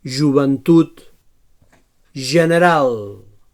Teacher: So palatal fricatiu sonor.